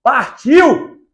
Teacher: Oral, porque oral, ó, partiu. Tô falando de boa, não passou nada pelo nariz.